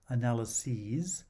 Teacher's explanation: The plural has a long vowel, analyses, with a voiced s.